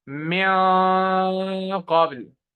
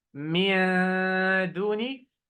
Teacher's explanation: the qaf, one of the heavy letters. So I should make the ghunna heavy ghunna.